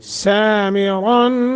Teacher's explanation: سا سین کے اوپر کھڑی زبر ہے، ایک سیکنڈ کی مد کریں گے، را موٹا بھی کریں گے، اور نون تنوین کے بعد حروف اخفا میں سے تا ہے، لہذا اخفا.